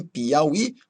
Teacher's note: Em Piauí, você vai ter um hiato entre o I e o A